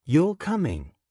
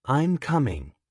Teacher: questions often rise, you're coming. statements often fall, "I'm coming." If you say everything in a flat tone, your English will sound unnatural, even if your grammar is perfect.